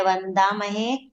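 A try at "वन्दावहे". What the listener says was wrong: महे नहीं, वंदा वहे।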